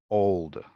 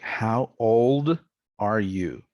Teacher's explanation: final l as a swallowed sound this pronunciation is called a dark l